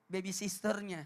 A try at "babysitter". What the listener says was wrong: Sitter. Ya nggak pakai S. Tat.